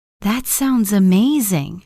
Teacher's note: Notice how your voice rises slightly at the end. It shows emotion and interest.